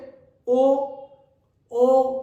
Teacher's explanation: होट और कंठ दोनों से बोला जाएगा